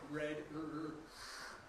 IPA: red